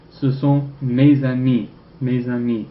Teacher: That S can be pronounced in liaison and breaks up the vowel clash.